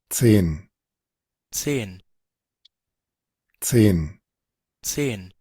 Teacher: Y la TS es un africado. Es un africado que significa que se unen dos consonantes como que fueran una especie de diptongo